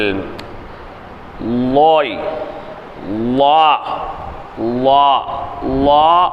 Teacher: லா என்பதனுடைய உச்சரிப்பு மேல் நுண்பல் நுனியில் நுனிநாவை லேசாக சேர்த்து நாவை குவித்து உச்சரித்தல். லோய், லா, லா, லா அப்படிங்கும் போதும் நாக்கு லேசாக குவிக்கணும்.